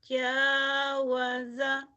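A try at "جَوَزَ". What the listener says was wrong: jawaza, zainya rapuh. Jawaza,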